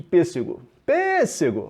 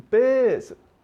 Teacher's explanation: Sílaba tônica na antepenúltima sílaba. Proparoxítona.